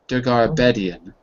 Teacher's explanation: But it's a weird name, but probably the stress is on the bed syllable